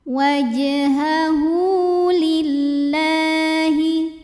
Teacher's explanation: dua huruf hidup huruf setelahnya bukan a i u bukan Hamzah maka ha damirnya dipanjangkan dua harakat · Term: madsilah qasirah